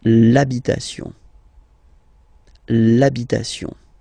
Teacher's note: Even if you've got this H, then the first sound you hear is A